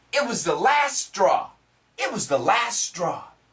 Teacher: In this case, the S and the S cancel this T.